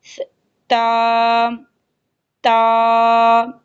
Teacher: تا کا مخرج ہے کہ زبان کی نوک کو ثنایا علیہ یعنی اوپر والے دانتوں کی جڑ کے ساتھ لگانا